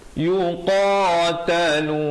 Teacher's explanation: makhrajnya di pangkal lidah, di bahagian belakang lidah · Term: qaf